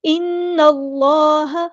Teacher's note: نون پہ غنہ زمانی اور ایک الف کے برابر رکیں گے اور نون کو ہم نے لام کے ساتھ ملا دینا ہے، حمزۃ الوصل ہمارا ڈراپ ہو جائے گا۔ یہاں پہ اللہ کا جو لام ہے وہ پورا ادا کریں گے ہیوی، اس میں جلالہ تفخیم ہو رہا ہے۔